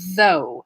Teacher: it has a voice th the beginning and then a diphthong o u sound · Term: voiced TH